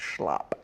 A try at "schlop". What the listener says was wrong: And pronounce the P.